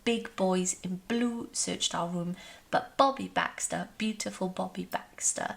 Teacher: we see lots of consonant sounds coming through with the b the plosive b